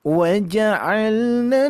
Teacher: Nun tasdidnya didengungkan ya. Nun tasdidnya didengungkan.